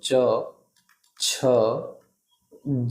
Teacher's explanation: इसका उच्चारण कहाँ से होता है तो तालु से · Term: च वर्ग